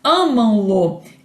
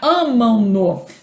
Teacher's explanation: Esse fonema final nasal grafado com a letra M é que vai assimilar a consoante seguinte lateral, né, grafada com a letra L. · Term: assimilação progressiva